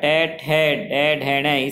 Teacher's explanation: मूर्धन्य, क्योंकि हमारे मुख में जो ऊपर का हिस्सा होता है वह मूर्धा और उससे स्थान बन गया मूर्धन्य। तो टेठ है हमारे मूर्धन्य स्थान से बोले जाते हैं।